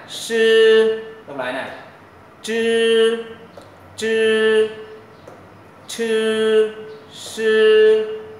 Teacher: lưỡi mình nó uốn cong lên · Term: âm uốn lưỡi